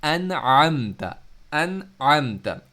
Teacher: تو ان دونوں کو الگ الگ پڑھنا ہے، آ کو الگ پڑھنا ہے ہم نے، آئین کو الگ پڑھنا ہے. ان، اس میں آ پڑھتے وقت آپ کی آواز رک رہی ہے، آئین کو پڑھتے وقت آپ کی آواز یعنی گھوم کر باہر نکل رہی ہے، کہیں پر اسٹاپ نہیں ہو رہی.